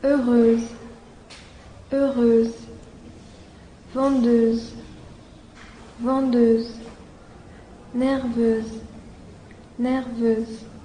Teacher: 请大家把双唇突出，必须突出成圆形，舌尖抵下齿龈，舌前部微微抬起，让你的唇部肌肉感觉较为紧张